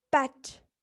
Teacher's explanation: when pronouncing the vowel E in pet, the tongue remains in the middle